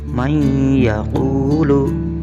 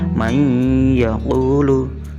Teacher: Cara membacanya, nonnya dimasukkan atau dileburkan ke dalam huruf ya. Jadi nonnya tidak terbaca. Membacanya menjadi may yaqulu, dua harokat. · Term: idgham bi gunnah